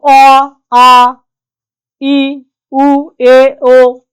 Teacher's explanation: আমরা যখন উচ্চারণ করি কোনরকম বাধা প্রাপ্ত হয় নাই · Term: স্বরধ্বনি